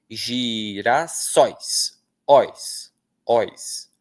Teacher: O o é vogal, o i é semivogal.